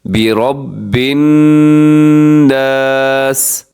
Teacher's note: برب یہاں نون کے اوپر شد ہے تو یہاں پر غنہ کیا جاتا ہے